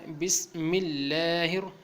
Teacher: اللہ کے نام کو یہاں باریک پڑھنا ہے